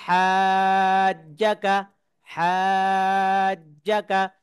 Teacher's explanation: জিম কিন্তু দুইবার উচ্চারণ হবে। জিম তাসদিদ ওয়ালা হরফ।